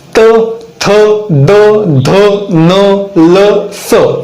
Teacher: आपली जीभ दातांना स्पर्श करते म्हणून आपण यांना दंत्य वर्ण असे म्हणतो